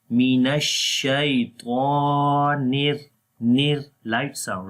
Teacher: So when we connect nir, at that time we do not read ra in heavy sound.